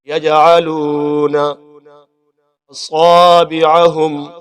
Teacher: عین کو اچھی طریقے سے صاف کریں گے. لام واو پیش لو، جسے مدہ ہے، ایک الف برابر لمبا کریں گے